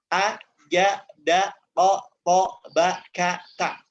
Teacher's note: Kita mengucapkan huruf-huruf ini dengan suara yang tertekan. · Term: sifat asyiddah